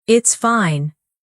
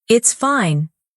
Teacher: If someone says, It's fine, in a flat tone, you can tell they're upset. If they say, It's fine, with energy, they're happy or excited.